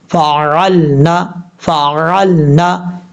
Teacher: اب یہاں پر ایک الف کی مقدار لمبا کریں گے، فی، میم الف زبر ما، فا زبر فا، عین لام زبر عقل، نون زبر نا، فعلنا، میم کے آگے الف ہے، ایک الف کی مقدار لمبا کر کے پڑھیں گے کیونکہ الف مدہ ہے۔ عین کو اپنے مخرج سے ادا کرنا ہے، فعلنا، فعلنا، اس طریقے سے۔